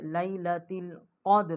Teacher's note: اس کے آگے جو نون ہے یہاں پر بھی ہم نے غنہ کیا ہے، اور یہ لیلۃ القدر، اور قاف جو ہے یہ بڑا قاف ہے، یہ مقصد قوے کے متصل زبان جو ہے جب اوپر والے تالو سے ٹکرائے گی، یہ بڑا قاف ہے، منہ پر کر کے اس کو پڑھیں گے